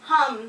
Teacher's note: the letter M, has a voice. You can feel it in your throat.